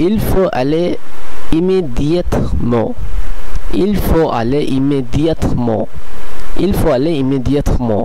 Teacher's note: এ এখ থাকার পরেও এর পরের শব্দটিতে ভাওয়েল ই আছে, কিন্তু এখানে কোনো সংযুক্তকরণ হচ্ছে না